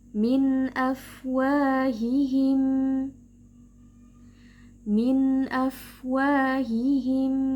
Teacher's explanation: Jadi huruf fa disertai dengan adanya nafas yang keluar.